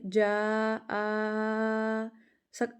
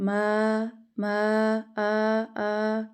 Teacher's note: جیسے ہوتا ہے الرح رح ما میم الف زبر ما ہوتا ہے نا، ادھر بھی وہاں پہ بھی اگر آپ دیکھو نا تو ایسے ہی نکل رہا ہے ما آ، تو منہ کا کوئی بھی حصہ ہل نہیں رہا، حالی حصے سے ادا ہو رہا ہے۔ تو الف کا مخرج کیا ہے کہ الف منہ کے حالی حصے سے ادا ہوتا ہے۔ ایک اور چیز آپ کو پتہ ہے، جب ہم اس کو پڑھ رہے ہوتے ہیں نا تو صحیح ہمارا منہ کھلتا ہے اور ہماری جو ہوا ہے وہ اندر باہر پاس کر رہی ہوتی ہے۔